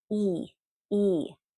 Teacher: The long E is you're contracting and smiling, and your cheeks go back and your tongue gets strong and it goes back a little bit.